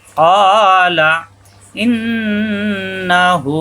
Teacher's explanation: ক জিব্বার গোড়া থেকে একালিপ টান